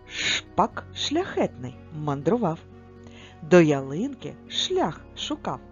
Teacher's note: звук ш за звучанням твердий приголосний